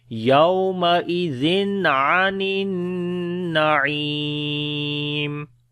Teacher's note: عین کو گلے کے درمیان والے حصے سے، نون کو اوپر شد غنہ کریں گے، عین کو پھر گلے کے درمیان والے حصے سے، اور یہاں پر مدہ ہے، یا مدہ ہے لمبا کریں گے.